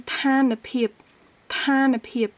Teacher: il est plus naturel en fait d'allonger la prononciation de la consonne nasale, de la consonne finale qui est dans la première syllabe pour la lier avec la deuxième